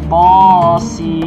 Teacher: To 2 harokat dan Sin 6 harokat